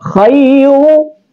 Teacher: Nah, kan di sini di khairu ada ra sebagai huruf tafhim. Ra tafhim dibaca tebal